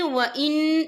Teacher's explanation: یہ دیکھیں وَإِن، یہاں نون ساکن ہے، نون ساکن کے بعد جو ہے کاف آ رہا ہے، اور کاف جو ہے اکفا کا ورڈ ہے، تو ہم یہاں اکفا کریں گے، نون ساکن کی آواز کو ناک میں چھپائیں گے۔